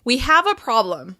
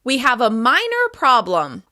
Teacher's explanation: Stressing the qualifier suggests that this problem can be fixed